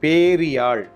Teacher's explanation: பெரு என்பதில் ரு இருந்த ரு என்பது என்னவாக ஆகி இருக்கிறது ரி என திரிந்திருக்கிறது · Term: குற்றியல் இகரம்